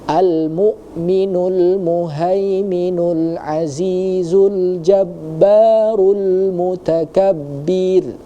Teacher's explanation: di kalimat muhaiminu tadi sudah benar menggunakan ha yang tebal